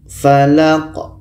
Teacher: La ini pendek dan qa ini dimatikan. Qa mati hukumnya adalah qalqalah.